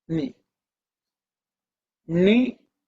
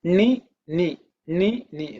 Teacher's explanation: see this knee is a dental knee okay not that knee this is softer knee which is a dental okay where your tongue is just behind the teeth